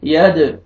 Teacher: दाल साकिन है और दाल हुरूफ कलकला में से है तो यहाँ पे डबल साउंड आएगा